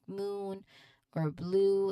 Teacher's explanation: the vowel sounds is sustained and your tongue remains in a stable position. So be high and towards the back of your mouth. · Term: long man of thong